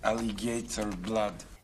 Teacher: So Russian-speaking English will sometimes stick a little y sound in.